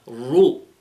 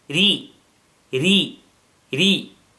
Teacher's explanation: With the dhamma and fatha, ra is heavy. With the kasra, ra is light.